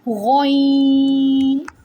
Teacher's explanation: Ghoin originates from the upper portion of the throat.